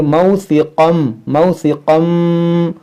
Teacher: یہاں دیکھیں تنوین کے بعد میم ہے، یہاں پر ادغام کریں گے، اور یہاں قاف حروف مشتعلیہ ہے، اس کو موٹا بھی کریں گے